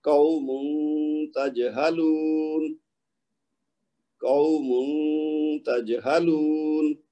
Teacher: تنوین کی آواز کو غائب کریں گے, اس کی کوشش کریں گے اخفا ہو جائے